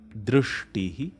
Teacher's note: The r is a vowel, an individual distinct vowel separate from u or e.